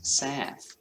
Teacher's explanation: the ow sound flattens and goes wide and high